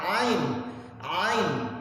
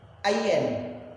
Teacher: Tapi kalau umpamanya dalam praktek makhraj huruf, sedikit kita suaranya ditarik ke hidung, dia akan berbunyi dengan suaranya ain, bukan ayen.